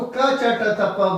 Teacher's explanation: ठीक है, तो आपको क च ट त प बोलने में कोई वाइब्रेशन नहीं है, कम ताकत लगेगी। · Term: अल्प प्राण